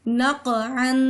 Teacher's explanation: کیونکہ یہ باریک کاف ہے، اس کو باریکی سے ادا کرتے ہیں، اور جو دو نقطوں والا قاف ہے وہ موٹا قاف ہے، اسے ہم پڑھتے ہوئے اپنے ہونٹوں کو گول کرتے ہیں اور موٹا کر کے ادا کرتے ہیں